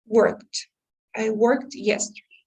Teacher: you're going to have to pronounce almost like a t instead of a d because otherwise if you say a d then it's not going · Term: past tense